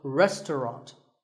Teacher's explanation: The second syllable is just ta, and the third is ront, so restaurant.